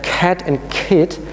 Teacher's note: when you hold your hand in front of your mouth then you should feel a rather strong puff of air coming out when you speak the K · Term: aspirated